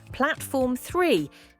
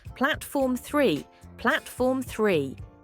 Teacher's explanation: make sure to stress the first part of platform and then pronounce the three correctly platform 3 platform 3 great